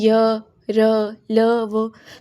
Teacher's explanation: अंतस्थ व्यंजन उन वर्णों को कहते हैं जिनके बोलते समय जीभ मुख के किसी भाग को पूरी तरह स्पर्श नहीं करती उन्हें अंतस्थ कहते हैं।